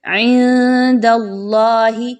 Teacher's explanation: نون ساکن کے بعد دال کا حرف آ گیا، یہاں پر اخفا کیجئے، نون کی آواز کو مخفی کر کے پڑھیے